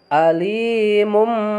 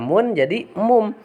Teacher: Ketika nun mati atau tanwin bertemu dengan huruf ba, maka si bunyi tanwin itu harus diganti dengan bunyi mim. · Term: iklab